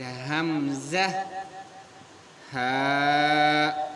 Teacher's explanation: حلق کا آخری حصہ جو ہے یہاں سے نکلتے ہیں حمزہ اور ہا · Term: اقصى الحلق